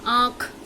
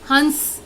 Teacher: अगर मैं अनुनासिक यानी कि चंद्र बिंदु करूंगी तो नाक और मुंह दोनों से हवा निकलती है। जैसे कि मैं आपको बोलूंगी आंख, देखिए नाक और मुंह से एकदम आपकी ध्वनि निकालते समय हवा निकलेगी, वो हमारा कहलाएगा अनुनासिक।